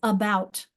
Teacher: the bout is really strong, but the and about is pretty weak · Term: weak syllable